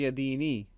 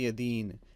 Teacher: because of a pause, we do not pronounce the vowel on the last letter. That is not done in Arabic.